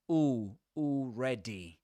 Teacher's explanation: If you say, ooh, if that's pronounced, clearly pronounced, if you truly round your lips and you push them forward, you will usually omit the L